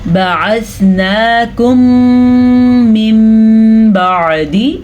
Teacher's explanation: میم ساکن کے بعد دوبارہ میم آ چکا ہے تو ان دونوں کو ہم آپس میں ملا دیں گے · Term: ادغام شفیع